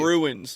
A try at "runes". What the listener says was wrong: it's runes. There's no I.